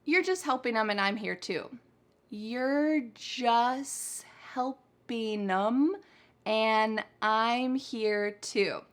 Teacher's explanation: we cut out the t in the word just all the time. And this is going to make English sound pretty fast because there's just whole sounds being thrown out, especially for these common words.